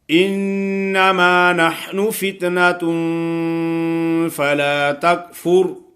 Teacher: یہ تین قسم کے حروف اگر نہ ہوں تو آگے غنہ جو ہوتا ہے اس کو غنہ مخفا کہتے ہیں، یعنی اخفا والا۔ نون کی آواز صاف نہیں آتی، فل آواز ناک میں نکلتی ہے۔